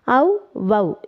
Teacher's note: இறுதியிலும் வரும்பொழுது ஒரு மாத்திரை அளவில் ஒலிக்கும் அவகாரக் குறுக்கம் அவ் வவ் என அவகார எழுத்து தனித்து வரும் இடங்களில் தனக்குரிய இரண்டு மாத்திரை அளவில் முழுமையாக ஒலிக்கிறது